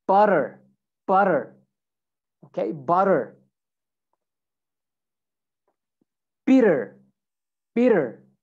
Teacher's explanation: So when you have two T's, you can make that sound like a D sound.